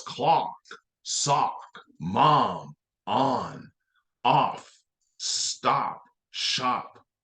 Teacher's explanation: Like all vowels, O also has a short sound. It sounds like aw.